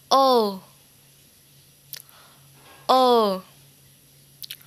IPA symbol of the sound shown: 3: